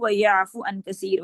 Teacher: ویعفو کا جو واو مدہ ہے یہ بھی حذف ہے رسمن و لفظ. ایک تو سچویشن یہ ہو سکتی ہے جس کی ریزن کیا ہے کہ مجزوم ہو گئے، مجزوم ہو کے حرف الا جو ہے وہ حذف ہو گئے. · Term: حذف الواو